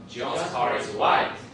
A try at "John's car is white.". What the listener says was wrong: No stress on is. William's telling us there is no stress on is. And prominence on white. Is considered a function word, okay?